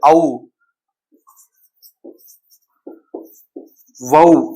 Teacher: இந்த ஔங்கிற எழுத்து தனித்து இருக்கும்போது ஔ, வௌ என தனித்து வரும்போது தன்னுடைய 2 மாத்திரை அளவுல முழுவதாக ஒலிக்கும். தன்னுடைய மாத்திரை அளவுல குறையாது, 2 மாத்திரை அளவில் முழுமையாக ஒலிக்கும்.